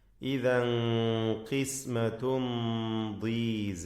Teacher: ശേഷം ദ്വാദാണ്. ദ്വാദിന് കസ്റായതിനാൽ കുറഞ്ഞ തഫ്ഖീം മാത്രമാണ് നൽകുക